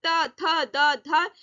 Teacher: त थ द ध, ये जो है दांतों के पास से आवाज है, जबान जो है आपकी, जीभ जो है वो दांतों के पास से लग रही है